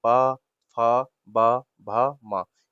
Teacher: ये सब ओष्ठ की सहायता से बोले जाते हैं।